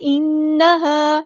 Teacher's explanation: نون پہ غنہ زمانی ہو رہا ہے